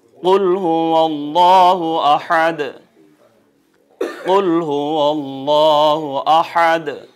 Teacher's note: قاف دو نقطی قاف ہمیشہ پر حجم ہوگا، بھاری ہوگا